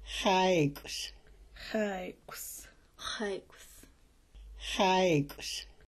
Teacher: X with a dot underneath is called a back X and it's unlike any English sound it makes a rough throat clearing sound